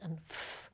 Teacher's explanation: For voiceless sounds like [s] and [f], the vocal folds are held apart to let air pass through.